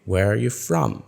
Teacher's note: the stress builds up rising through the question but it falls at the end